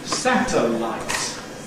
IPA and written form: ˈsætəlaɪt (satellite)